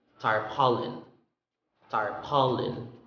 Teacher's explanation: The stress is in the second syllable.